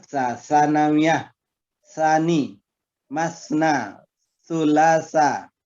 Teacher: Jadi sa itu lidah kita pada antara dua gigi atas dan bawah.